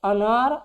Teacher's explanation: जब आप अनार बोलेंगे तो जीभ में कोई परिवर्तन नहीं होता, जहां बीच में बैठा रहता है वहीं बैठा रहता है, उस तनिको इधर उधर नहीं होता। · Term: मध्य